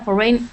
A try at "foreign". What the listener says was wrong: Maybe like foreign, the stress pattern on foreign, desperate effort to trace him to his lair.